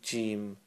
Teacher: You should notice that the tongue is raised. The central part of the tongue is going up towards the palate while you say this letter, okay? And you'll know if you're doing it right or wrong.